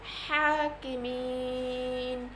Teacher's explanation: ওয়াকফের স্থানে নুনে জবর এসেছে, এখানে নুনে সাকিন হয়ে যাবে, কারণ ওয়াকফের স্থানে যদি এক জবর, এক জের এক পেশ, দুই জের দুই পেশ আসে সেক্ষেত্রে মনে মনে সাকিন ধরে পড়তে হয়, একে বলে আরবি সাকিন।